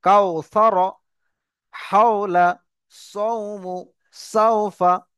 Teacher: এখানে দেখেন কাফ অও জাবার কাও, দেখেন ওয়াও সাকিনের ডান দিকে জাবার চলে এসেছে, এটি হলো ওয়াওলিন। একে তাড়াতাড়ি পড়তে হবে, নরম আওয়াজে তাড়াতাড়ি পড়তে হবে, টান দেওয়া নিষেধ।